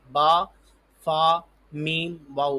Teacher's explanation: با دونوں ہونٹ جوڑ کے با ادا ہوتا ہے، فا نچلے ہونٹ پہ اوپر والے دانت رکھ کے ادا ہوتا ہے، میم بھی ہونٹ جوڑ کے، اور واؤ ہونٹ گول کر کے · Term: ہونٹوں سے